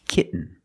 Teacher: When you have T-E-N, T-O-N, or T-A-I-N at the end of the word, and the syllable is not stressed, the T makes a different sound. We have to make a stop T and link it to the N.